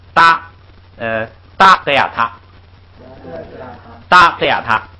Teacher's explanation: 那个啊呢就起一个延长音的作用